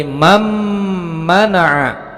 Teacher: Nun sukunnya langsung ditasdidkan dengan huruf mim di depannya karena salah satu dari huruf idgham bi gunnah. Ditasdidkan, mendengung, panjangnya 2 harokat.